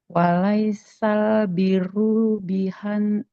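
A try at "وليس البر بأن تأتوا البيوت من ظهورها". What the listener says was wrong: Bi'a bukan biha, bi'a ta'tul.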